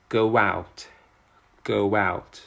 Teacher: between the go and the out, there is a linking sound w